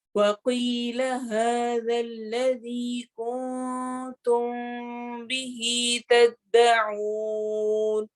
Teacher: کنتم نون پر، نون کو چھپا کے پڑھنا ہے